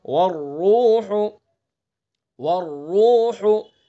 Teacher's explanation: را مشدد متحرک ہے، را مشدد کے اوپر پیش ہے، تو اس لیے اس را کو پر پڑھیں گے. والروح، والروح، ہا کا جو مخرج ہے حلق کا درمیان سے ادا کریں گے.